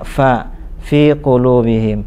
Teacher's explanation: ada mahmusnya, ada anginnya